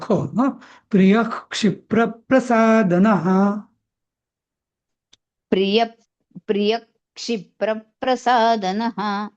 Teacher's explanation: या प्रिय मधला जो विसर्ग आहे ना यच्या पुढचा त्याचा अर्धा ख होतो